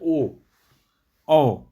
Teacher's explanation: कंठोस। कंठ के साथ ओष्ठ का भी प्रयोग हो रहा है। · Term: कंठोस्थ